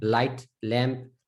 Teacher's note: if the L is in the beginning of the word, right? Light, lamp, tongue is like flat.